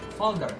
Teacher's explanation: We end the word with the R, like fold up. Americans would end the word with the sound R, like folder.